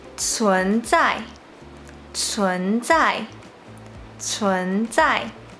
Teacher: when pronouncing “c ㄘ” the airflow is stronger than pronouncing “z ㄗ”